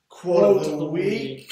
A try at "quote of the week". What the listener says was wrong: Oh, you said it faster. That was too fast.